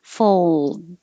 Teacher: We do say this L, but because the L is in the same position as the D, fold. Your tongue goes up to the L and then holds it. The D just stops the airflow.